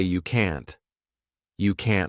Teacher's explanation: Native speakers often pronounce T as a flap T, which means we don't push out that puff of air because it forces us to take a pause.